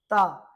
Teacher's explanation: ता जब आप ता का उच्चारण करेंगे तब आप पाएंगे कि आपकी जीभ आपके दंत से स्पर्श करती है